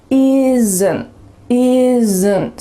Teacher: A lot of words that have 2 consonants side by side, S and an N in this word, are going to have a little added schwa sound.